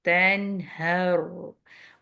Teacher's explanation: نون کہنے کے بعد ہی آپ نے نون کا اظہار کیا اور ہا پہ آگے ہر، رو اگین ہیوی ہوگا، سکون ہے رو کے اوپر اور اس سے پہلے فتح ہے